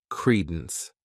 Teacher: the stress is on that first syllable